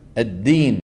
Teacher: من جمله الاخطاء في صوت الدال خلط صوتها بشيء من التاء نحو التين التين التين التين مالك يوم الدين وليس وليس وليس